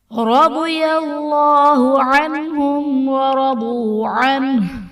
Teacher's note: رضی اللہ میں را پر زبر ہے، را کو پر پڑھا جائے گا، دعات حرف مستعلیہ ہے پر پڑھا جائے گا. · عنہم میں نون ساکن کے بعد حروف حلقی میں سے ہا ہے تو یہاں پر اظہار کا قاعدہ ہوگا، یعنی نون ساکن میں ہم غنہ نہیں کریں گے، اور میم ساکن کے بعد حرف با اور میم کے علاوہ واو ہے تو یہاں پر اظہار شفوی کا قاعدہ ہوگا، یعنی میم ساکن میں ہم غنہ نہیں کریں گے